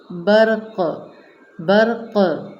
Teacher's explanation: قاف کو قلقلہ کریں گے، برق، اس طرح سے نمایاں پڑھیں گے۔